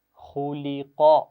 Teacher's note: اور اس میں خا، لام اور قاف تین آوازیں ہیں، تو خا اور قاف کو موٹا پڑھنا ہے، اس کا خیال رکھیے، لیکن درمیان میں جو لام ہے اس کو موٹا نہیں پڑھنا۔